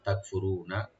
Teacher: তাকফুরুনা, তা ওপেন রাখবেন আর কাপটাকে একটু হামস করতে হবে, তাক, কলকালা হবে না। রু এখানে রাটা ডিপ করে একালে টানবেন, নুনে কোনো টান নাই